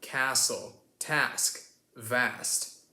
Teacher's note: it's an a sound. A bit more elongated than the a sound that the Brits have. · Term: ah sound